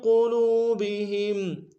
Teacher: ما فی قلوبہم، ما فی قلوبہم، میم کے ساتھ الف مدہ ہے ایک امتداد میں کھینچیں گے الف مدہ کو، فا یا کے ساتھ ملائیں گے، یا مدہ ایک امتداد میں کھینچیں گے، قوف کو موٹا ادا کریں گے، لام کو واو کے سامنے لائیں گے، واو مدہ، اس کو بھی ایک امتداد میں کھینچیں گے